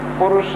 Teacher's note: और एक होता है मूर्धन्य शकार, जो मूर्धा से बोला जाता है